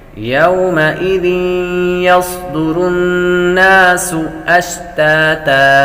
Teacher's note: سین حروف صفیرہ میں سے سیٹی کی آواز آئے گی۔